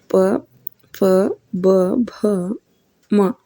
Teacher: ಓಷ್ಠ್ಯ ವರ್ಣಗಳು ಅಥವಾ ಅಕ್ಷರಗಳು ಇವು ತುಟಿಯ ಸಹಾಯದಿಂದ ಹುಟ್ಟುತ್ತಾವು. ಆದ್ದರಿಂದ ಇವಕ್ಕೆ ಓಷ್ಠ್ಯ ವರ್ಣಗಳು ಅಥವಾ ಓಷ್ಠ್ಯ ಅಕ್ಷರಗಳು ಅಂತ ಕರೀತಾರೆ.